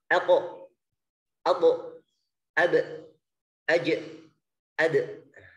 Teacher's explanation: Qaf, ta, ba, jim, dal. 5 huruf ini, ya, semuanya huruf yang sifatnya syiddah, tertahan suara. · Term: qalqalah